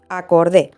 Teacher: la vocal que se pronuncia fuerte es la e